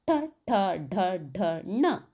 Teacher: ಟ ವರ್ಗ ಮೂರ್ಧ ಭಾಗದ ದಲ್ಲಿ ಅಂದ್ರೆ ನಾಲಗೆಯ ಹಿಂದೆ ಚಾಚಿ ಹೇಳುವಂತದ್ದು ಅದನ್ನ ಮೂರ್ಧನ್ಯ ಅಕ್ಷರಗಳು ಟ ಠ ಡ ಡ ಣ ನೋಡ್ಕೊಳ್ಳಬಹುದು ನಾಲಗೆಯನ್ನ ಹಿಂದೆ · ಟ ವರ್ಗ ಮೂರ್ಧ ಭಾಗದಲ್ಲಿ ಅಂದರೆ ನಾಲಗೆಯ ಹಿಂದೆ ಚಾಚಿ ಹೇಳುವಂಥದ್ದು